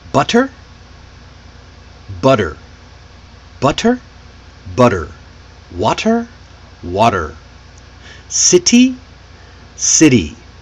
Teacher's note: It's a quick relaxed sound that replaces the T between vowels. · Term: flap T